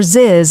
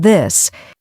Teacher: many Learners pronounce it as s or Z like syn instead of think or ziz instead of this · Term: th sound